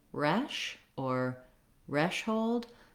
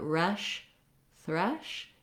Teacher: the R, is tightened back, the th is forward with the tongue relaxed between the teeth